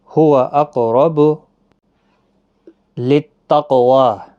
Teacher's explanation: را بھی زبر کی وجہ سے پر پڑھا جائے گا